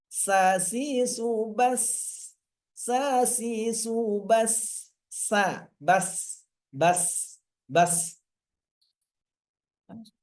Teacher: ujung ujung lidah dan ujung gigi seri atas bawah tapi lebih dominan ke bawah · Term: sin